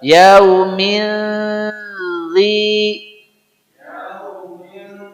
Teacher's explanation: suaranya bukan n bukan Eng yaitu suara n yang tidak jelas itulah ikhfa kadang-kadang mendekati n kadang-kadang mendekati mem kadang-kadang berubah mutlak menjadi Eng